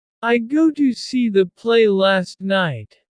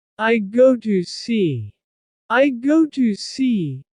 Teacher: Instead of saying, got to, separately, I run the words together. And leave off the T at the end of got. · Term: elide